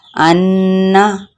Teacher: अब ये गुन्ना के लेटर्स हैं, मीम मुशद्दद और नून मुशद्दद। इनकी आवाज़ को हम नाक के अंदर ठहराते हुए पढ़ेंगे।